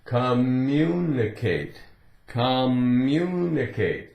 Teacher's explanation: So we're not going to say communicate, communicate, communicate. There's no break. The way it's said, the two M's, really they just run together, right?